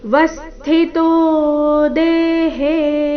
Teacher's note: ಆಘಾತ ತ್ರ ನಲ್ಲಿ ಆ ಸ್ವರ ಇದ್ದ ಕಾರಣ ಅದು ದೀರ್ಘ ಬರಬೇಕು ಸರ್ವತ್ರವಸ್ಥಿತೋ ವ ಮೇಲೆ ಆಘಾತ ತೋ ದೀರ್ಘ